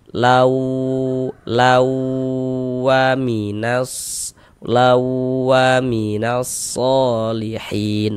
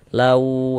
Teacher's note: di bagian launya itu suaranya itu kita tahan, kita panjangkan sebentar ya. Kira-kira sepanjang 2 harokat. · Wanya pendek ya, launya yang kita tahan, kita panjangkan.